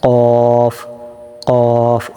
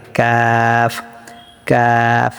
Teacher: যে কফটা হবে মোটা, কফ গোড়ার থেকে, আর কাফটা হবে পাতলা একটু আগে থেকে,